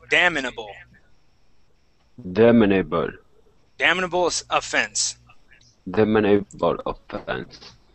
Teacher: we're going to stick an I right between the M and the N